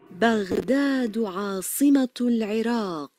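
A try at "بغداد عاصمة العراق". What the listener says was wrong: Excellent job. Perfect.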